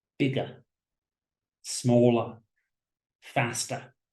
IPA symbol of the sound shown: ə